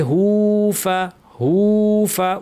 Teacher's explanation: হায়ের উপর উল্টা পেশ টানতে হবে। হুফা, হুফা উল্টা পেশের কারণে টেনে।